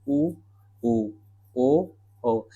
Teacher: जिन स्वरों का उच्चारण करते समय ओठ की आकृति वृत्त की तरह गोल हो जाती है उसे हम वृत्ताकार स्वर कहते हैं।